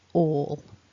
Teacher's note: when we've got this owl at the end of a word after a vowel it's more like a swallowed sound at the back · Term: dark l